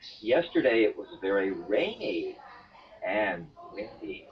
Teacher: making a definite Step Up in pitch and then two definite step Downs in pitch · a jump up on rainy and then two steps down